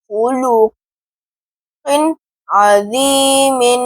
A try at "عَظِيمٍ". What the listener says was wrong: ذی پڑھ رہے ہیں، وا پر پڑھیں آپ، عظی،